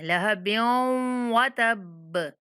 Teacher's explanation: बा हरूफ कलकला में से है तो इसलिए इसको सख्ती से पढ़ेंगे, पढ़ते हुए हिला के पढ़ेंगे।